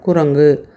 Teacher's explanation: முதல்ல வர அந்த கூ நம்ம வாய் குவிந்து முழுமையாக ஒரு மாத்திரை அளவுக்கு உச்சரிக்க முடியுது ஆனா இறுதியில் வரக்கூடிய அந்த கூ நமக்கு அவ்வளவு முழுமையா உச்சரிக்க முடியல பாருங்க அரை மாத்திரை அளவுக்கு தான் உச்சரிக்கிறோம் குரங்கு அந்த வாய் குவிய மாட்டேங்குது.